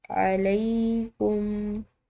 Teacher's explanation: دیکھیے، جناح، حلقیہ یہاں پر ادا کی جائے گی، جناح علیکم، لام کے بعد یا ساکن کی وجہ سے اس کو ہم ایک الف کی مقدار کھینچ کر ادا کریں گے ، علیکم، فیما، یہاں پر یا ساکن ہے تو یا ساکن